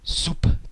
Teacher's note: a very very distinct unvoiced p in the middle of the word · In Russian, it's written with a consonant cluster here of a B and a T, and the second or final consonant in the cluster is unvoiced, and therefore the entire consonant cluster undergoes devoicing, and the B is now pronounced as a P